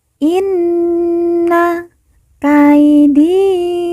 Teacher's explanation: Kaidi di kita baca panjang dua harakat karena di depannya terdapat huruf Ya Sukun yang merupakan tanda baca panjang dua harakat Inna Kaidi matin kemudian